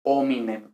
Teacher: en la pronunciación restituida no se pronuncia la h